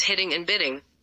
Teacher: the same flap sound may be heard in the words hitting and bidding, although it is intended to realize the phoneme T in the first word and D in the second.